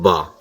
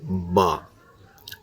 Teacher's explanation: یہ لفظ با دونوں ہونٹوں کو ملا کر نکلتا ہے، با، الف با۔